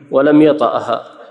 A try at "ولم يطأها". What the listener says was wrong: كيف يطأها بالفتح؟ نعم انطق بها صحيح. يطأها بالجزم.